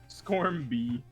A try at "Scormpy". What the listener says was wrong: No, Scormpy with a P, not a B. Scormpy.